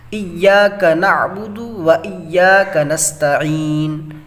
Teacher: یہاں پہ عین ہے، یہاں پہ عین ہے، عین کو کس طرح مخرج کے ساتھ نکالنا، یہ حروف حلقی میں سے حلق سے نکالنا ہے